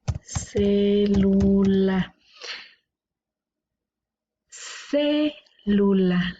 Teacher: La sílaba tónica está en la antepenúltima, por lo tanto esta es una palabra esdrújula. La vamos a colocar aquí sobre las palabras esdrújulas y las palabras esdrújulas siempre llevan acento.